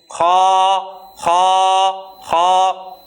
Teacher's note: اب خا کے اندر اکثر طور پہ ہم یہ غلطی کرتے ہیں کہ اس کو ہم پڑھتے ہیں یعنی اس میں جو کھردرا سا ایسی آواز بنتی ہے، یہ غلط ہے، یہ آواز اس طرح سے بننی نہیں چاہیے۔ خا ایک موٹا حرف ہے، اس کو موٹائی کے ساتھ پر پڑھنا ہے، لیکن اس میں کھردرا پن نہیں ہونا چاہیے